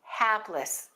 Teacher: we stress the first syllable